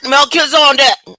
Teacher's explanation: This emphasis is on the second syllable Kiz.